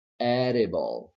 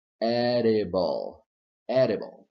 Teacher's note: The vowel to the right of D is not stressed. Therefore, flap D is possible and totally correct.